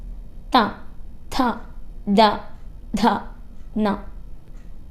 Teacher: നമ്മുടെ ടീത്തിന്റെ സഹായത്താലാണ് ഉച്ചരിക്കുന്നത് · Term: ദന്ത്യം